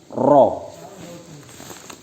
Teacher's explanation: Makharijul hurufnya bertempat pada ujung lidah agak ke dalam mengenai gusi gigi depan atas.